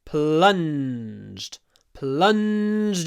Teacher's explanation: that n before d is long. So, we get plunged.